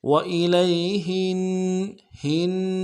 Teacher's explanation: پڑھیں گے، لئی وإلی، ہا کو نون کے ساتھ ملانا ہے، نون کے اوپر تشدید زور دیں گے، نون ساکن میں غنہ بھی ہوگا